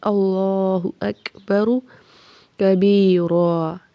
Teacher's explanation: اللہ اکبر، اللہ لام کو موٹا پڑھیں گے، ہا کو تیزی سے پڑھیں گے، حمزہ کو کاف سے ملائیں گے، کاف پہ ہمس ہوگا یعنی سانس جاری رہے گی، با اور را کو تیزی سے پڑھنا ہے، را کو موٹا پڑھنا ہے۔